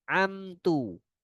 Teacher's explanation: Ya, izhar syafawi. Harus jelas dia mimnya. Tidak boleh tertahan, tidak boleh pula dia melantun.